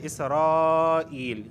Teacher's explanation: اسرائیل اذکروا، یہاں پر دیکھیں اسرائیل، یہاں پہ اسرائیل جو ہے نا یہ مد متصل واقع ہو رہا ہے کہ ایک ہی کلمے کے اندر مدہ اور حمزہ جمع ہوئے ہیں، تو یہاں پہ مد متصل ہوا